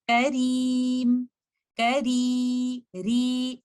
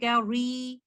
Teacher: You will not elevate your back of the tongue and you will recite letter Ra light with thinness. You will say Kareem, Kari, Ri, instead of saying Kari. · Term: tarqiq